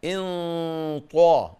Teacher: اللي جاية دي أهم حاجة بقى، خد بالك من الإخفاء اللي جاي. إن طا أهو يبقى في إخفاء، وبعد الطاء مفخمة